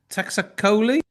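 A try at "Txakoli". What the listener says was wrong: Chacoli. Well, the TX comes as a CH, right?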